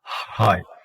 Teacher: h as in high. So that is a voiceless glottal fricative.